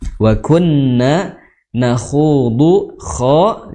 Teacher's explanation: makhrajnya adalah di tenggorokan paling atas, tenggorokan paling atas atau di belakang pangkal lidah